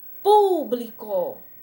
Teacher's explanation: Justamente aqui, público vai ser uma proparoxítona, porque a sílaba tônica dela vai ser a antepenúltima